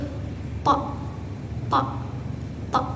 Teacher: huruf to ini tekanannya kuat dan suaranya juga tebal. Cara pengucapannya itu to, to, to.